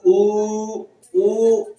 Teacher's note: ओष्ठ स्वर है जो ऊ और ऊ, तो इसमें ओंठ हमारे गोले हो ही जाते हैं।